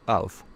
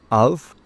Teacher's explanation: We say of with a V sound. Of. And we say off with a F sound.